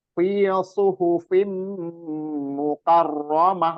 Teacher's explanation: Fi suhufim mukarramah, mimnya itu kasroh tain, fa-nya kasroh tain, mim jadi itu apa namanya idgham birunnah, jelas ditekan diperjelas, mimnya ditekan dirunnahkan didengung dua harokat.